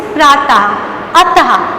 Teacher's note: इसका उच्चारण कंठ से होता है और बोलते समय हा की ध्वनि निकलती है